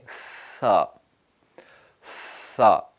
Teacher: ثا میں ہم سانس کو پھونکتے ہیں، باہر زور سے نکالتے ہیں، ثا ثا، تو یہ ثا کا مخرج ہے۔